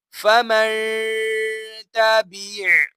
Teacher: آپ دیکھ سکتے ہیں نون ساکن ہے، نون ساکن کے بعد تا حروف اخفا میں سے آ رہا ہے، لہٰذا یہاں پر ہم غنہ کریں گے کیونکہ یہاں پر اخفا کا قاعدہ لگ رہا ہے